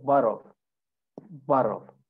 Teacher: So I said that in American accent, when we have 2 T's together, it becomes like a D sound that comes from our throat.